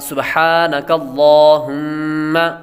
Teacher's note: ہا یہاں پر ہم نے باریک پڑھنی ہے، دوسری موٹی ہا نہیں پڑھنی۔ اگر موٹی ہا پڑھیں گے لفظ کا معنی چینج ہو جائے گا تو نماز فاسد ہو جائے گی۔